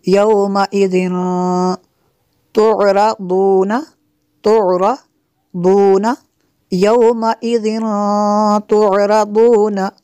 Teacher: یومئذ تنوین کے بعد تا ہے حروف اخفا میں سے تو یہاں پہ اخفا ہوگا، اس لیے غنہ کریں گے